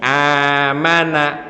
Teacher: amanah dalam ayat Alquran bacanya cukup dengan dua harakat atau satu Alif saja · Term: mad badal